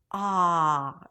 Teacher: Not too much, because then it's going to sound like oh, and we don't want that. The back of the tongue pulls back, and it's really low.